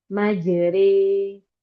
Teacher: Membaca antara alif dengan ya atau fathah dengan kasroh. Jadi dia baca antara fathah dan kasroh di tengah-tengah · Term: imalah